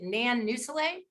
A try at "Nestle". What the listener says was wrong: It's Nestle. The U is silent.